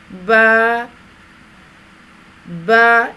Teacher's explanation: ہونٹوں کے گیلے حصے کو سختی سے ملا کر باریک آواز میں پڑھیں، یعنی آواز کو پر نہیں کریں گے، با نہیں پڑھیں گے.